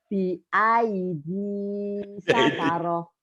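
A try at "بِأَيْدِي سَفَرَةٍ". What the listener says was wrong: Jadi dalnya itu agak bias. Ini Bu, mungkin artikulasinya ya Bu. BID, Ibu masih muda kan? BID. BID.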